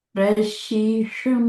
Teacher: మూర్ధన్యం ఎక్కడ వస్తది మధ్యలో టంగను ఫోల్డ్ చేసి పైకి మధ్యలో పెడతాం